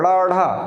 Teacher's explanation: इनका भी उच्चारण मूर्धा से ही होगा, ड़ा ढा मूर्धा से ही होगा, यानी कि जिह्वा जाएगी। लेकिन इनमें एक खासियत यह है कि जिह्वा मूर्धा को स्पर्श करने के बाद झटके के साथ नीचे आती है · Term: उत्क्षिप्त व्यंजन